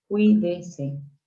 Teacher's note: La palabra cuídese, cui va siempre como una sola sílaba.